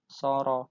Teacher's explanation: Artinya dibaca cuman panjangnya satu alif atau dua ketukan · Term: mat tobi'i